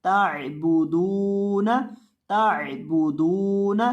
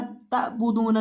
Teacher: ताइबुदूना ताइबुदूना, ताबुदूना नहीं पढ़ना, ताइबुदूना इस तरह से पढ़ेंगे और आइन को हलक के दरमियान से अदा करना है